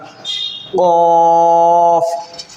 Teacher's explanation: ज़बान की जो जड़ होती है और तालू का नरम वाला हिस्सा जब लगेगा, टच होगा तब निकलेगा